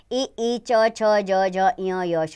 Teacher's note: इ, ई, च, छ, ज, ज, ञ, य, श, ये वाणी इसमें आते हैं। तालु और जीभ इनका उच्चारण स्थान है। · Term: तालव्य